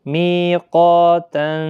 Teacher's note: می یا مدہ ہے، قا الف مدہ ہے، قاف مستعلیہ بھی ہے، پر بھی پڑھنا ہے اس کے ساتھ الف بھی